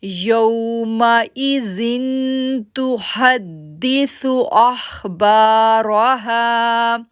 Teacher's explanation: اب دیکھیں یومئذ ذن ایک تو زال سافٹ ہو گیا، دوسرا ہم وہاں پر غنہ کر رہے ہیں کیونکہ تنوین کے بعد اگر تا لیٹر آ جائے تو وہاں پر اخفا غنہ کرتے ہیں